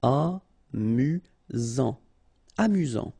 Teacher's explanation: Final T not pronounced. You get only one S here between the vowels, so it's really this Z sound.